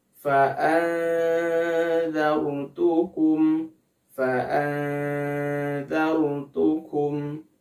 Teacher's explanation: Ketika mengucapkan nun sukunnya, kita sudah bersiap kepada makhraj huruf dzal. Huruf dzal ini makhrajnya ada di ujung lidah bertemu dengan ujung gigi seri atas. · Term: ikhfa awsat